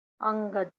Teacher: उससे पहले अनुस्वार उससे पहले अनुस्वार है, तो इस अनुस्वार को हम कवर्ग के ही लास्ट वर्ण के रूप में बोलते हैं